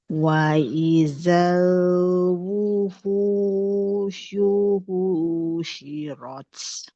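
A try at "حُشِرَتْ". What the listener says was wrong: Yang kedua pendek. Husyirat nggak boleh. Husyirat. Ha. Hu. Punya yang kedua jangan panjang. Husyirat bukan husyirat. Husyirat.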